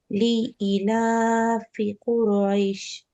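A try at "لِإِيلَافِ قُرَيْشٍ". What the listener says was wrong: লি ইলাতে টান দিছো, কিন্তু ইতেও একটা টান আছে, কারণ বলো তো? এই যে ইয়া আছে, ইয়া মাদ উইথ কাসরা,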